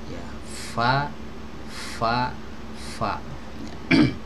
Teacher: ujung gigi seri atas disini ditempelkan dengan perut di bibir bawah ya perut bibir bawah jadi bagian bibir tapi agak ke dalam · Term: huruf Va